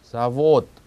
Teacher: 오 있는 부분을 길게 끌면서 분명하게 발음하면 됩니다. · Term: 강세